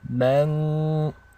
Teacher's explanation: you want to hold this nun for 2 counts. There's ghunna